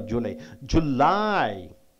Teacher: you have to stress on second syllable for only for July